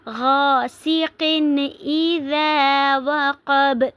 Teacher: اب با پر جو ہے وقف کی صورت میں قلقلہ ہوگا، با ساکن ہو جائے گا تو اس لیے ہم اس پر قلقلہ کریں گے۔ · اب غاسقٍ تنوین کے بعد حمزہ آ رہا ہے حروف ہلکی میں سے، تو اس لیے اس کو ہم ظاہر کر کے پڑھیں گے، تنوین کی آواز کو ظاہر کر کے پڑھیں گے